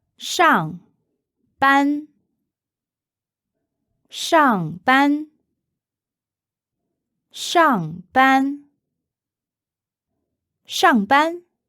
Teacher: that's fourth tone Shang meaning on and first tone ban meaning class Duty or shift so using this say I'll go